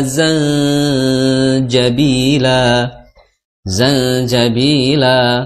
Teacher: zanjabila zanjabila la di situ ada mad iwad Ya Mad iwad Jadi dibacanya fathah selama dua harakat saja Mad thobii saja jangan sampai zanjabila itu terlalu Kepanjangan ya terlalu panjang karena madwat